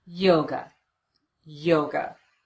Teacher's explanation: The second syllable is unstressed. We replace the letter A with the unstressed vowel, the sound, and we get away from that syllable as quickly as we can.